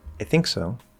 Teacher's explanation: think is stressed right and it's the focus